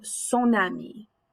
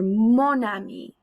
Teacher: that liaison is talking about how that n sound moves over